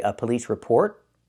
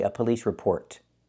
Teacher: I can say a police report and make a stop T or I can release the T and say a police report.